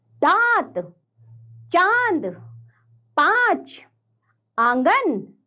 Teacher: अनुनासिक का उच्चारण करते समय हमें जो ध्वनि है वह नाक और मुख दोनों से निकालनी होती है